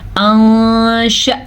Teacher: अंशअनाहुन्ना, यहाँ पे आपने नोटिस किया कि नून की आवाज़ कुछ गायब सी हो गई है क्योंकि यहाँ पे इख्वा का कायदा हो रहा है।